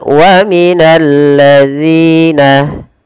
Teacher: ada alif lam syamsiyah, langsung diidghamkan ke huruf lam